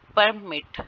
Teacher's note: पर के ऊपर स्ट्रेस है, मिट के ऊपर कम स्ट्रेस है